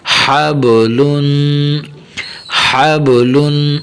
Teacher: ہا کو باریک کرنا ہے اور با کے اوپر یہ تھوڑا سا قلقلہ کرنا ہے